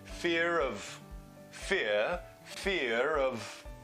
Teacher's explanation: non-tic accent which means that it's an R dropping accent fear that R might come back in if it's linking into a vowel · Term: linking R